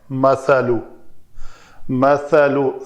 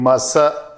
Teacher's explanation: سا کے لیے نوک لسان جو ہے وہ دونوں دانتوں اوپر والے اور نیچے والے، ان سے مراد ہے دو، تو ان کے درمیان نظر آنی چاہیے سا۔ اگر اندر رہے گی تو وہ سین بن جائے گی، مسا یہ نہیں ہونا چاہیے۔